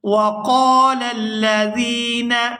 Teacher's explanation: یہاں قاف کو پورا ادا کرتے ہوئے الف مدہ کی وجہ سے کھینچ کر ادا کریں گے۔ وقال الذین، یہاں زال کو نرمی کے ساتھ ادا کرتے ہوئے یا ساکن کے ساتھ ملائیں گے، زال یا زیر زی، اور اس کو یہاں پر کھینچ کر ادا کیا جائے گا۔